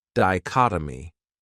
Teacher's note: This word has four syllables and the stress is on that second syllable. Dichotomy. That third syllable has that schwa, that uh sound.